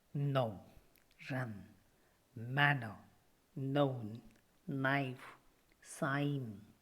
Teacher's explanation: the soft palate is lowered and the air comes out through the nose · the tip of the tongue makes a closure against the teeth ridge. The rims of the tongue are against the upper side teeth. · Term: alveolar nozzle, alveolar nasal